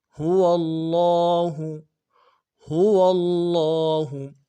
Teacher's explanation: هو اللہ، هو اللہ، ہا کو نرمی سے ادا کرنا ہے، ہوا میں جو ہا ہے اس کو بھی، اور لفظ اللہ کی ہا کو بھی نرمی سے ادا کرنا ہے۔ عموماً اس کو ہم سختی سے ادا کر رہے ہوتے، تو سختی سے نہیں ادا کرنا ہے، بالکل نرمی سے ادا کرنا ہے، بالکل نرمی کے ساتھ۔